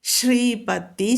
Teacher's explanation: ശ്രീ കടുപ്പിച്ച് ചൊല്ലാം ശ്രീ മാത്രം ട്ടോ പ കടുപ്പിക്കരുത്